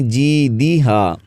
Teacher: دال کے نیچے زیر ہے، مجہول نہیں پڑھیں گے